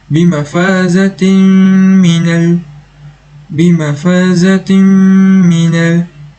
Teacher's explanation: haruslah didengung apabila tanwin bertemu dengan mim, maka ianya merupakan idgham ma'aghunnah dan haruslah didengungkan dengan kadar 2 harakat